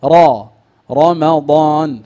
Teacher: فانتبه، الراء مفخمة. لماذا؟ لأنها مفتوحة.